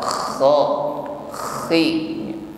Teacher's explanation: huruf kha, khi, entah itu fathah atau kasrah tetap ada bunyi dengkur, ada ngoroknya ya. Ngoroknya lembut saja, ada gesekan di tenggorokan